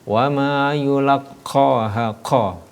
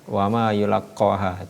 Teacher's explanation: Untuk qaf ini berada di anak lidah paling bawah ya